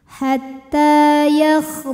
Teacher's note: maka huruf ha panjang dua harakat Hatta ta Mat thii muqaddar karena barisnya fathah panjang maka huruf ta panjang dua harakat · huruf ra dibunyikan secara tafkhim karena berbaris dhammah, maka dibacanya tebal.